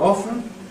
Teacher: I prefer a pronunciation with no T sound